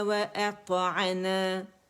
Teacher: حمزہ اقص الحلق سے ہوگا اور میم کی کسرہ ادا کریں گے زیر، ٹھیک ہے.